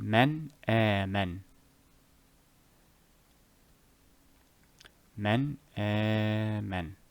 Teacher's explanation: I will manifest the noon in enunciation, or I will reveal the noon in enunciation, or I will show the noon in enunciation. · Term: Eth-haar